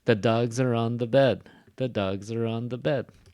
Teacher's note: dogs is one syllable so it gets the stress